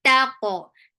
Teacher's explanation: Ta is very sharp. For qaf, give qalqala, make qaf heavy.